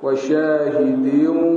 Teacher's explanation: tanwin bertemu waw idgham ma'al gunnah dia kena masuk hidung lah